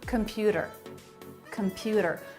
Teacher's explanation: Computer, computer, middle syllable stress.